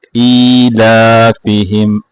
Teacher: ایلافہم، الاف نہیں پڑھتا ہے، دونوں حمزہ جو پہلا ہے اس کو بھی کھینچنا ہے، دونوں کو کھینچنا ہے۔